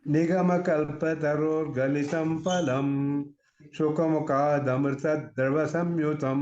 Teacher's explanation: the striking point of this Drutavilambit is that first three syllables are all laghus, all short sounds.